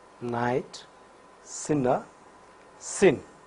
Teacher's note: At the same time, there is a V-lick opening, and so the air from the lungs passes through the nose. Vocal cords vibrate for n. So, n is voiced alveolar nasal. This nasal sound will occur initially, medially, and finally in words.